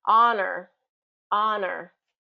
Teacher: it starts with an H in its spelling, but that H is not pronounced. So we start really with a vowel sound.